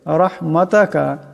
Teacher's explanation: রাহমাতাকা, এখানে রার উপর জবর আছে, এটাকেও মোটা করিয়া পড়তে হবে।